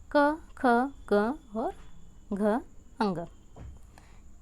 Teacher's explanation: क वर्ग का उच्चारण स्थान है कंठ। अर्थात क जो है इसका उच्चारण स्थान है कंठ, अर्थात जिसका उच्चारण कंठ के माध्यम से हो, जिसका उच्चारण कंठ के माध्यम से हो उसको हम कहेंगे कंठ्य व्यंजन।